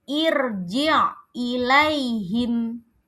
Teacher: ro-nya dibaca tebal karena sebelumnya ada hamzah wasol.